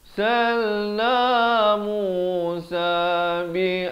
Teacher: Walaqad arsalna, ra-nya dibacakan tebal.